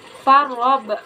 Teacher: Hukum tajudnya qalqalah kubra karena ada huruf qalqalah atau ba yang sukun asli dibacanya memantul keras.